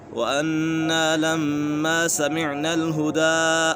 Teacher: نون مشدد ہے اور میم مشدد ہے تو یہاں پر بھی اور یہاں پر بھی دونوں جگہ غنہ ہوگا